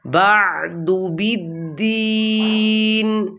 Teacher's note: عین کو ساکن کرنا ہے متحرک نہیں پڑھنا